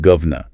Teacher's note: Governor. In a fast political chat, that middle vowel is elided and you get govna.